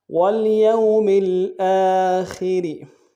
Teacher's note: باللہ والیوم الآخر، والیوم الآخر، والیوم میں یا کو واو کے سامنے لائیں گے، واو لین بغیر کھینچے پڑھیں گے، میم کو لام کے سامنے لانا ہے، لام ساکن غنہ نہیں ہوگا، حمزہ کے اوپر کھڑا زبر ہے، ایک الف دال میں کھینچیں گے، خا کو موٹا ادا کریں گے، را کو باریک ادا کریں گے